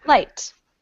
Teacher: that first L is a light L because it comes at the beginning of the word